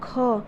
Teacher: ख, मतलब क से ज़्यादा वायु इस ख से निकल रहा है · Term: महाप्राण